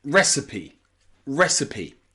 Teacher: in the word recipe the stress is on re re at the beginning